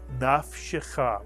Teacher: 1 shva under the fei, 1 shva under the shin. The second shva must be pronounced.